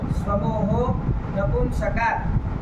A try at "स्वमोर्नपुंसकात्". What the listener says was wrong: तो वो पहले क्या बोले तुम? ये समूह नपुंसकात् ये क्या बोले? कहाँ है ऐसा अलग अलग कर रहे हो? एक साथ बोलो ना सब।